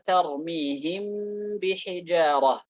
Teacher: Al-mimu ahadul huruf allati takhruju min asy-syafataini athna'a intibaqihima. Mim merupakan salah satu huruf yang keluar dari dua bibir ketika dua bibir itu ditempelkan. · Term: ikhfa syafawi